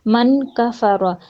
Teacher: نون ساکن کے بعد کاف اخفا حقیقی